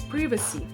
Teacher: British English. The stress is on the first syllable and the I sounds like a short E as in pin